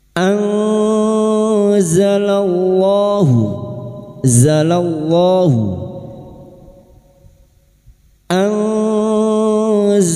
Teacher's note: Tumma anzalallahu nun sukun bertemu zain ikfa hakiki. Kita samarkan bunyi nun sukun dan mendengung selama tiga harakat.